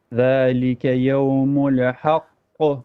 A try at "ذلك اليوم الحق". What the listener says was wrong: ذلك اليوم الحق. You're bouncing the lam on the يوم. You say يوم الحق. No. يوم الحق. ذلك اليوم الحق. Okay, work on the lam inshallah.